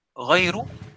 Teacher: ra ni dibaca secara tarqiq, iaitu ra nipis